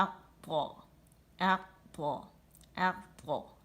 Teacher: طا میں استعالہ ہے، زبان کی جڑ اوپر چلی جاتی ہے، اطباق ہے، اور سامنے سے مخرج سے اٹھ جاتی ہے، بیچ میں پیالہ نما ہو جاتی ہے تو اطباق کی صفت پیدا ہوتی ہے۔